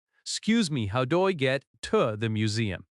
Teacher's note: The stress falls on Q's in excuse, excuse me. In natural American speech, excuse me often sounds like 'scuse me. It is quick and smooth.